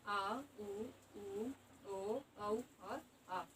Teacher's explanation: जीभ का पिछला हिस्सा कार्य करता है उन्हें पश्च स्वर कहते हैं